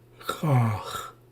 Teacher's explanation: And it sounds kind of like bother. It's a longer ah sound, like bother.